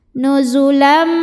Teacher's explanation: tanwin fathahnya ini dileburkan atau dimasukkan ke mim disertai dengungan jadi ini bunyinya nuzulam sambil tahan bunyi m nya nuzulam Min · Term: Idgham Bighunnah